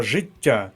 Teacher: звук ть пом'якшений і знаходиться між двома голосними и та а